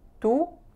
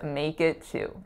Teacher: It's not a oo, it's not a pure oo sound. It's really slightly moving. Our lips only need to be involved at the end of the word, oo, at the end of the vowel, I mean, two.